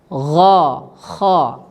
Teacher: dari ujung tenggorokan, yaitu tempat keluarnya huruf ghain dan kha